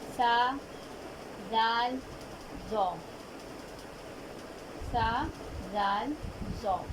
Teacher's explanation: نرمی والے حروف 3 ہیں، ان کی ادائیگی نرمی سے ہوگی، سختی نہیں آئے گی ان میں، یعنی کہ زبان کی نوک کہاں لگے گی؟ اوپر کے دانتوں کے کناروں سے، نہایت ہی نرمی سے ادا ہوں گے۔